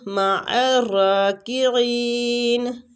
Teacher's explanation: عین کو را کے ساتھ ملاتے ہوئے را کو کھینچیں گے اور پور بھی پڑھیں گے